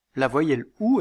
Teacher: la voyelle ou est une voyelle postérieure c'est-à-dire que la langue est située en arrière dans le palais c'est une voyelle fermée c'est-à-dire que le dos de la langue